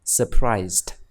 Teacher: កន្លែងនេះយើងបញ្ចេញសំឡេងtattheendណាព្រោះបញ្ចប់ដោយedបន្ទាប់ពីsoundសះយើងបញ្ចេញសំឡេងt